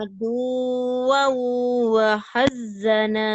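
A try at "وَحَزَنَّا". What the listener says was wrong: Bukan. Wahazana. Nggak ada. Adu wow. Enggak, itu mah ada tasdid wahazana mah. Wahazana. Wahazana. Datar.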